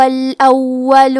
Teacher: کلمت الاول میں واو پہ تشدید ہے تو ہم 2 حرف کے برابر واو کو پڑھیں گے، لام پہ پیش ہے تو ہمیں پیش کو ظاہر کرنا ہے۔